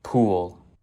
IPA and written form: pʰuəɫ (pool)